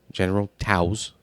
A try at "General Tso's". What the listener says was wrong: I mean, yeah, but Tao would be spelled TOA. It's General Tso's. The T is silent.